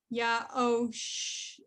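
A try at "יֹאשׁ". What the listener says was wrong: Almost. Okay. There's no under the yud. So it's yo.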